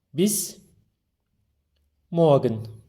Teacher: r harfini çok bastırmıyor